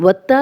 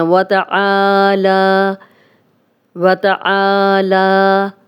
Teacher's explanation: وَتَعَالَى، وَتَعَالَى، آ کو بھی جتنا ہم آ کو لمبا کریں گے اتنا ہی لا کو لمبا کریں گے، کیونکہ اس پہ بھی کھڑا زبر ہے